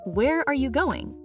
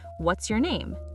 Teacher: Questions with who, what, where, when, why, how, end with falling pitch. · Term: WH question, fall